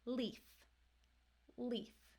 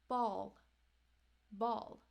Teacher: L comes at the end of a word or syllable now the dark L will have kind of a hidden vowel before it